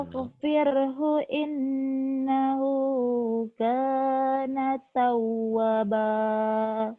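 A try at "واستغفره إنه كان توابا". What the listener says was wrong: wanya panjang kana tawwaba kana tawwaba. Coba lagi.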